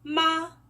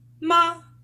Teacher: The first tone is high and flat. It is pronounced with a steady, high pitch, almost as if it were sung instead of spoken. · Do you hear how the pitch stays high and constant?